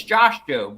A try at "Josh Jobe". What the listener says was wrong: You actually pronounced his name Hobe.